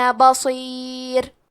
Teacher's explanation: کلمت بصیر میں حرف الصاد حروف التفخیم میں سے ہے، تو ہم صاد کو بھاری آواز میں پڑھیں گے